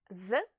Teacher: when you say Z you can feel your vocal chords vibrate the consonant Z is what we call a voice consonant but